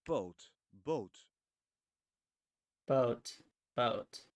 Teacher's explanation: the beginning of a word it's called aspiration for Dutch constants there is little or no aspiration